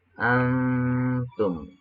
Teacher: huruf nunnya mati ketika mengucapkan an, di situ ada samar huruf ta. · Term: ikhfa